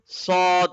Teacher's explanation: in sod, we touch the tongue at the backside of the lower teeth, and it should be heavy. There is an aw sound.